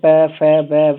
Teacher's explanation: जब बोलेंगे आप तो दोनों दोनों होठ जो है टच होगा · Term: ओष्ठ वर्ण